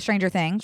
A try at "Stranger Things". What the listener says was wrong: emphasize the things of that. I would say Stranger Things.